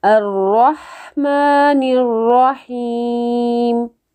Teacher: نیر را کے اوپر زبر ہے تو اس کو آپ نے موٹا کر کے پڑھنا ہے۔ الرا، یہاں پر بھی را کو موٹا پڑھیں گے، اور نیر را وہاں پر بھی را کو موٹا پڑھیں گے۔